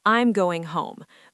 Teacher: The voice drops at the end. It signals completion and confidence. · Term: falling intonation